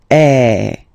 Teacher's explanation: the sound is really open, and normally your mouth should be opened a little bit more than with the accent aigu as well. Okay, so it goes like A. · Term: accent grave